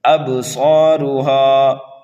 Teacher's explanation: ابصارها خاشعہ، با حروف قلقلہ میں سے ہے، یہاں پر قلقلہ صغیرہ ہوگا، صاد کو ایک الف کے برابر کھینچ کر کے پڑھیں گے اور یہ حروف مستعلیہ میں سے ہے، اس لیے موٹا کر کے پڑھا جائے گا۔ را کو بھی موٹا کر کے پڑھیں گے، ہا کو کھینچ کر کے پڑھیں گے ایک الف کے برابر۔ ابصارها، خا کو موٹا پڑھنا ہے، ایک الف کے برابر کھینچ کر کے پڑھنا ہے۔